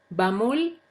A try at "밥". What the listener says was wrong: Dijiste pam.